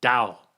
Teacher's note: adding the W sound at least in the English language has a natural falling off effect when preceded by the O vowel